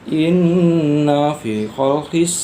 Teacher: cara baca hukum ghunnah yaitu didengungkan serta ditahan sekitar 2/3 harokat